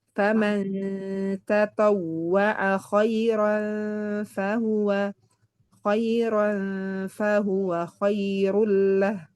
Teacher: Antara izhar dan idgham. Maksudnya tidak dijelaskan nunnya, juga tidak dileburkan langsung ke huruf ikhfa-nya. Berarti dia samar pertengahan.